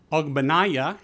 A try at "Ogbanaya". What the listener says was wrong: Obaniah. G is silent.